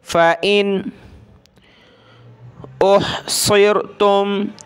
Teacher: فَإِن، فا زبر فا، حمزہ نون زیر ان، فَإِن. یہاں نون ساکن پہ ہم نے ناک میں آواز پیدا نہیں کرنی، آپ کو پتہ ہے وہ رول کیا ہے کہ حروف حلقی کے 6 ورڈ ہوتے ہیں، حمزہ، ہا، عین، حا، غین، خا، وہ آ جائیں اگلے ورڈ میں تو ہم نے یہاں غنہ وغیرہ اور ناک میں آواز پیدا نہیں کرنی ہوتی.